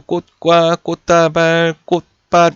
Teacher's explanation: 음절의 끝소리 규칙에 의해서 치읓이 디귿이라는 대표음으로 바뀌게 된다라는 겁니다